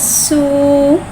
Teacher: सीन को एक अलिफ यानी 3 हरकत के बराबर खींच के पढ़ेंगे। सीन में सीटी को ज़ाहिर करके पढ़ेंगे। · सीन में सिटी को ज़ाहिर करके पढ़ेंगे। सीन के ऊपर पेश को होठों की गुलाई के साथ अदा करके पढ़ेंगे। वाव को एक अलिफ यानी तीन हरकत के बराबर खींच के पढ़ेंगे।